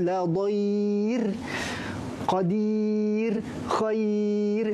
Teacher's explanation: Ra mati mendatang ni, mati yang asalnya dia wasal, ra tu berbaris, kemudian kita wakafkan dia jadi mati. Jadi ra tu kita matikan dan sebelumnya ada huruf ya. Maka secara automatik ra ini dibaca dengan nipis. Contoh, kalau asal la dhaira, tapi bila kita wakaf dia jadi nipis.